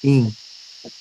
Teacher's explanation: Tem que ser tanto pelo nariz quanto pela boca. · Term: nasalização